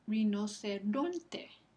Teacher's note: Esa penúltima sílaba recibe el acento prosódico.